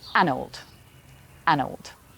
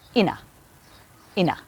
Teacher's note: the unstressed words get pushed together to just make 1 sound. In the 3rd line, in a get pushed together to say ina, ina.